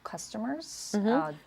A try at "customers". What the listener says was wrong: So this is a cup sound. Customers. Right. So it needs to be a bit more forward. You want to shoot the voice forward. Customers.